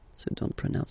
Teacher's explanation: So don't pronounce the final T here.